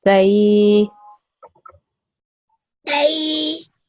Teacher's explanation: when you say they, the A sound is 2 seconds long, okay? So it should be as long as, for example, this alif over here that you do. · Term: ya leen